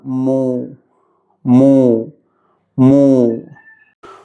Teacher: മീം ഉച്ചരിക്കുമ്പോൾ ശ്രദ്ധിക്കുക. മീം വമ്മോട് കൂടിയുള്ള മീമായതുകൊണ്ട് തന്നെ രണ്ട് ചുണ്ടും മുന്നോട്ട് പക്ഷിയുടെ രൂപത്തിൽ ആകൃതിയിൽ വെക്കേണ്ടതാണ്.